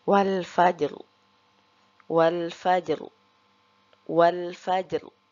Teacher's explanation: huruf jim tersebut harus kita baca qalqalah dengan jelas · ro-nya kita baca tebal karena sebelum ro sukun ada huruf yang berharokat sukun dan sebelumnya ada huruf yang berharokat fathah, maka ro-nya kita baca tafkhim atau tebal.